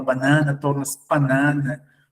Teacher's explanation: alteração das consoantes bilabiais vozeadas pelas consoantes bilabiais não vozeadas